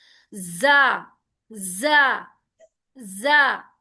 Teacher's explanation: जा जो है ना, हुरूफ सुफेरिया है, ये एक विजिल आवाज रखने वाला, यानी इसमें सीटी की एक आवाज आएगी, इसको सख्त लेटर भी कहा गया है।